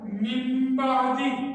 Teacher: نون ساکن کی آواز کے بعد اگر ایک حرف آ جائے اور وہ ہے با، تو نون ساکن کی آواز کے بعد میم چھوٹا لگ جائے گا